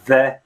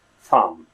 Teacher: TH sound, which is the voiced version of it, right? The like in the word the, right? The, and the unvoiced version, like in the word thumb